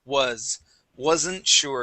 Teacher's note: Go to the word wasn't sure. So here we want to use a voiced S sound.